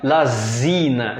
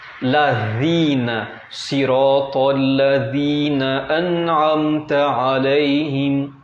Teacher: agora temos que deixar esse Z mais fraco, né? Deixando a língua entre os dentes. A mesma pronúncia da letra Tha, aquela letra que tem 3 bolinhas, o S entre os dentes, assim, né? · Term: letra Dhal